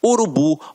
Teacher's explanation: a última sílaba é a tônica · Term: oxítonas